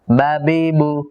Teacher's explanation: বা জবর উচ্চারণের সময়ও এক প্রকারের কলকলা হয়। এই কলকলাটার দিকে খুব বেশি খেয়াল রাখা জরুরি।